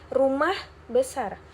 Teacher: kata pertama diberi tekanan lebih kuat dibandingkan kata kedua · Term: tekanan atau stres